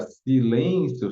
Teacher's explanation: na palavra silêncio só tem três sílabas e contando de trás para frente também é a segunda a mais forte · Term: paroxítona